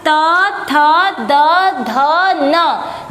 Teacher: त, थ, द, ध, न जब आप बोलेंगे तो दांतों पे आगे की जीभ का हिस्सा लगता है, तो उसे हम लोग दंत्य बोलते हैं, दंत्य अक्षर।